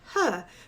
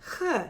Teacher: differentiate the English sound, *makes voiceless glottal fricative* from the *makes voiceless velar fricative* sound present in Hebrew